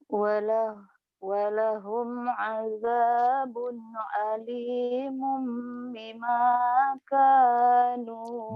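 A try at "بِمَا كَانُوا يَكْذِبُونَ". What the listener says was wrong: Bimanya kayak kedengaran mima ya. Bima, bi. Bima, bukan mima. Kedengarannya kayak mima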